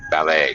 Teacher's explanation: Has second syllable stress. The T is silent.